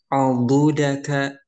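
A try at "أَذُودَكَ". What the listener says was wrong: Hilal. Ainnya barusan tebal. Adudaka. Adudaka.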